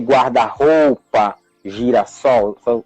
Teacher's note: So these compound words, they have the stressed syllable on the second word.